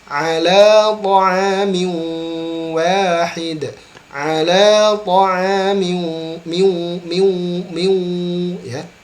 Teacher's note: Ala ta'amin ya, dengungkan di huruf waw.